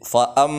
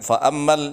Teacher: Ayat yang ke-9 yang perlu diperhatikan adalah mim tasydid, fa'am, begitu. Jangan fa'ammal, jangan begitu, tapi berhenti dua ketukan. Fa'ammal yatima fala taqhar.